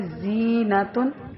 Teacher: زا کی آواز باریک اور سیٹی والی ہوتی ہے